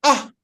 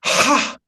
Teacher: When I say ah, there is very less air, no air at all, right? Then ha, very strong air. Ah, very slow and air, thin air.